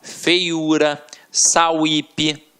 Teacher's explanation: Nas palavras acima, como feiura e sauípe, o que temos é semivogal mais vogal.